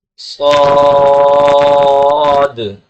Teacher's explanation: آخر میں دال کی آواز کو اس طرح نکالیں گے کہ زبان فوراً لگا کر کے اس کی جگہ سے، اس کے مخرج سے ہٹا لیں گے